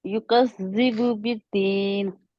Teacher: मद लेटर यु 2 हरकत युकज़ खींचनी है